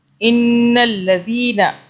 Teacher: کلر کا نون ہے اس کے اوپر تشدید ہے، اس لیے نون کو ہم 2 سے 3 سیکنڈ کے لیے ناک میں رکھیں گے